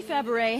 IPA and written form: fæˈbreɪ (Fabares)